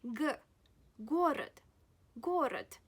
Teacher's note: G is also a voiced consonant, yet it occurs at the beginning of your word. That's why you pronounce it the way it should be.